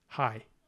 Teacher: the vowel here starts with an A and goes up to an e i high but it's not two separate syllables it's just High